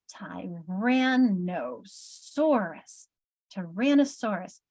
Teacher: That ran is getting that big emphasis, isn't it?